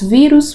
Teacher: vírus nós temos aí a penúltima sílaba tônica